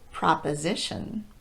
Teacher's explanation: in the word proposition Pro is occurring two syllables before the stressed syllable not right next to it